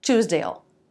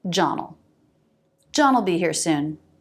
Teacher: This schwa L ending, the contraction of will, can go at the end of any third-person singular noun.